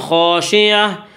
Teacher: گول تا پر جب وقف کریں گے تو گول تا وقف کی صورت میں ہائے ساکنہ بن جاتی ہے